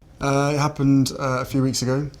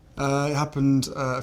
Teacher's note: The interjection is called a hesitation marker, and the vowel lengthening delays it even further.